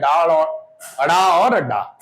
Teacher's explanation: जीभ ऊपर उठकर मूर्धा को स्पर्श करती है और फिर झटके के साथ नीचे गिरती है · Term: उत्क्षिप्त व्यंजन